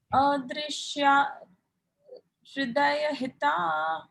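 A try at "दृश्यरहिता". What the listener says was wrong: Drishya rahita. Yeah, the dr looks like a ha.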